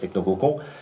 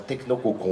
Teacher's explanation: Il est évident que l'accumulation pour moi, après c'est des sensations d'écrivain, mais le double O du haut cocon et le on final qui est très en fond de gorge, qui est nasalisé, c'est un O nasalisé, le on en phonème, le triple martelage du O au on crée un effet de fermeture tout à fait clair, tout à fait net, que je pense que quelqu'un qui n'a jamais fait de phonétique peut ressentir.